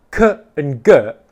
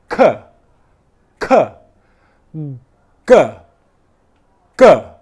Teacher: For me to make the 'G' sound or the 'K' sound in English the same part of my tongue the back of it, is touching the same part of my mouth, which is the back of the mouth. 'K' and 'G', /k/ and /g/ are plosive sounds, where airflow stops and then explodes out. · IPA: /k/ /g/